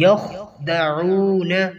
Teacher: وَمَا يَخْدَعُونَ، یخدعون، خا کو موٹا کر کے پڑھنا ہے کہ یخدعون، عین کی ادائیگی اچھی طرح کرنی ہے، یہ وسط حلق سے ادا ہوتا ہے